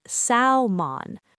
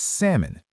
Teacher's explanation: People often say salmon, >> but the correct pronunciation is salmon. No L sound at all.